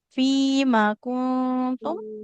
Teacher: Nah, mimnya fathah tanpa ada alif. Jangan dipanjangkan.